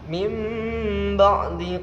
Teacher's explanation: Jadi suara nun sukun dileburkan menjadi suara mim dan didengungkan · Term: iqlab